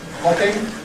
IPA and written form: ˈhɒpɪŋ (hopping)